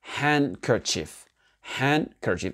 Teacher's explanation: Que le D n'est pas prononcé dans ce mot-là.